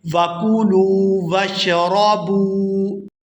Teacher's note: لام کو واو ساکن کے ساتھ ملائیں گے تو کھینچ کر ادا کریں گے